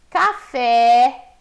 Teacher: são palavras em que a sílaba tônica é a última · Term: oxítonas